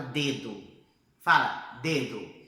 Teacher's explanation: Você sentiu a sua língua tocando por detrás dos seus dentes? Pois é, a letra D, tanto no português quanto no espanhol, para a gente poder fazer o som da letra D, ela toca lá atrás dos nossos dentes, né?